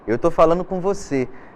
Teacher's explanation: até pela velocidade com que você fala, o D, a letra D de dado, ela some, ela desaparece. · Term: o gerúndio perder a letra D